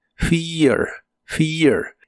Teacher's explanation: la e de este verbo se pronuncia como una I larga y la a se pronuncia muy suave